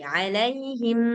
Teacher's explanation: Nah, ditambah lagi ghunahnya. Tambah lagi dengungnya. Dibiarkan dia agak lama dulu baru pindah ke huruf selanjutnya.